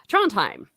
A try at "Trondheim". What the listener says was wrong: the D is silent. Trondheim.